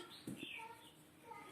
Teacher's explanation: री का और टा वर्ग, इन सब का उच्चारण स्थान मूर्धा होता है